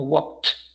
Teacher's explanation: walk no genera vibración, la letra K, el sonido de la letra K me refiero, walk. Por eso el pasado va a sonar como walked, porque tampoco genera vibración.